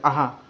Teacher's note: जिसे जो बिंदिया दो होती हैं उन्हें विसर्ग कहा जाता है विसर्ग का उच्चारण आधे ह की तरह होता है